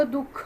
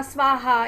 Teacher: विसर्ग याचा अर्थ श्वास सोडणे. विसर्गाचा उच्चार ह या वर्णाला थोडा हिसका देऊन केलेल्या उच्चारासारखा होतो.